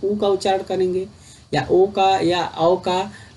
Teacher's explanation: वर्तुल के उच्चारण में होठों का आकार गोल हो जाता है, याद रखिएगा, वर्तुल में आपका होठों का आकार गोल हो जाता है।